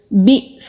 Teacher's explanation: حمزہ ساکن ہے، جھٹکے کے ساتھ ادا ہوگا، کٹ آف ساؤنڈ آئے گی